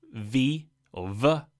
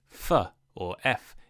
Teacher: V or V is voiced, so you use your voice box in your throat, and F or F is unvoiced, meaning no voice box. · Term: labiodental fricatives